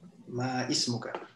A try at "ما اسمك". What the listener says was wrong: Ici, juste en passant, on ne dit pas ma ismuka. Il y a un hamzatul wasl. Alors on dit masmuka.